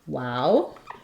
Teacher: one more front of the mouth sound with both lips which is our W sound